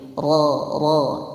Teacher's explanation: Yaitu menyimpangnya suara. Jadi tidak betul-betul getaran seperti R. Jadi suaranya menyimpang sebab adanya aliran yang kurang sempurna. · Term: inhiraf